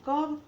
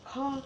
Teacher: હવે ક ઉચ્ચારણ કરતી વખતે આપણે પાછળ હ એવો શબ્દ અવાજ આવતો નથી, એટલા માટે એ અલ્પ પ્રાણ છે. પણ ખ એ ઉચ્ચારણ કરીએ ત્યારે હ એવો અવાજ સંભળાય છે. એટલે કે એના ઉચ્ચારણ વખતે આપણે પ્રાણવાયુ વધારે વપરાય છે, તો આપણે તેને મહાપ્રાણમાં મૂકીએ.